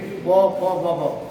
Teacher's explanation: जब प पढ़ेंगे तो ओष्ठ यानी ओठ दोनों सटेंगे